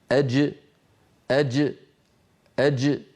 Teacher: شديدا مجهورا، يعني من وسط اللسان محبوس الصوت والنفس، هكذا أج أج أج. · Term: الجيم الفصيحة